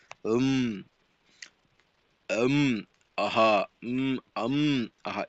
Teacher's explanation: ಕಂಠ ಮತ್ತು ಮೂಗಿನ ಸಹಾಯದಿಂದ ಹುಟ್ಟತಕ್ಕಂತಹ ಒಂದು ಅಕ್ಷರ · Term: ಕಂಠನಾಸಿಕ